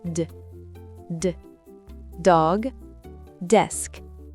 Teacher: Le D se prononce avec le bout de la langue contre les gencives supérieures.